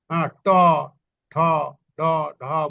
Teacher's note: এইগুলা যখন উচ্চারণ করি তখন মূর্ধাকে স্পর্শ করে এজন্য এটার নাম দিয়েছে কি মূর্ধন্য ধ্বনি